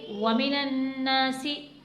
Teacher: सीन को नहीं खींचना क्योंकि बड़ी हरकत है, बगैर खींचे पढ़ेंगे।